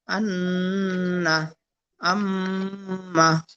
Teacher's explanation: নাকের বাঁশি হইতে গুন্নাহ উচ্চারিত হয়